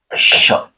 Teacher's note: तो श का उच्चारण जो होता है वह तालु से होता है यानी कि यहां से यहां से होता है किससे बनता है तालु से होता है श ठीक है।